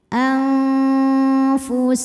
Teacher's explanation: Jadi ujung lidah kita, ujung gigi seri atas kita sudah menyentuh bibir bawah bagian dalam makhraj dari huruf fa ya. Sudah menyentuh tapi tidak menekan. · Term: ikhfa hakiki